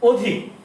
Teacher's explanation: আমরা লিখলাম অধিক কিন্তু উচ্চারণ করছি কিন্তু অধিক। তাহলে কি হয়ে গেল? এখানে অটা ও হয়ে গেল।